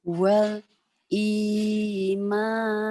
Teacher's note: Iya, walnya diidharkan, jangan ditahan. Tekan di i-nya karena mad tabi'i.